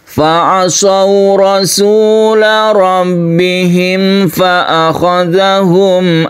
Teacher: syafawi artinya bibir makhrajnya ada di bibir yaitu huruf mim ini kemudian tidak kita dengukkan karena dia izhar harus jelas dan terang kemudian di sini ada tanwin bertemu dengan ro yang kita sebut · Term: izhar syafawi